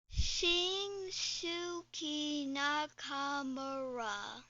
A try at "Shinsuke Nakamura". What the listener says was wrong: Wow, that was actually really close, except for the... You got his last name perfect. And the first name is just Shinsuke, not Shinsuke. The U is silent somehow.